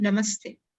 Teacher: if visarga is followed by either ta or tha, visarga becomes half sakara